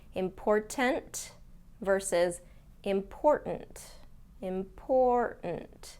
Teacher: Do you hear how I don't pronounce that middle T?